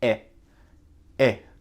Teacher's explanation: On a le son E avec la lettre I, E, C, E. Donc c'est très court, ce n'est pas I comme ça, c'est E.